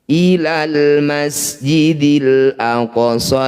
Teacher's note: Minal masjidil ini juga ilal ilal masjidil semuanya harus dibaca dengan jelas, namanya izhar qamariyah.